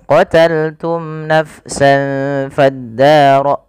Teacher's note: syafawi artinya izhar artinya jelas syafawi berasal dari kata syafah berarti ia harus jelas di dalam melafalkan mimnya tidak boleh ada penahanan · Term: izhar syafawi